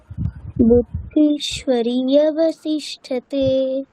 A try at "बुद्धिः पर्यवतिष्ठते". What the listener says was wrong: আচ্ছা বুদ্ধিফ পরে প আছে, তাহলে বিসর্গটা ফ বলতে হবে। বুদ্ধিফ পর্যবতিষ্ঠতে।